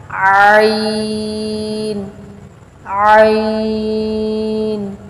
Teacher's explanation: عین بھی حا کی طرح حلق کے درمیانی حصہ سے ادا ہوگا۔ عین، عین۔ غین، غین۔